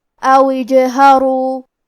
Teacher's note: واو کے بعد حرف الجیم پڑھیں گے، اور کیونکہ جیم پہ جزم ہے لہذا ہمیں جیم کو قلقلہ سے پڑھنا ہے، اور قلقلہ کا معنی ہے حرف ساکن کو ہلانا، تو ہم جیم کو ہلاتے ہوئے یہ کلمہ کو پڑھیں گے. او اجہرو حرف الراء پہ پیش ہے لہذا ہم راء کو موٹی آواز میں پڑھیں گے. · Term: حمزۃ وصل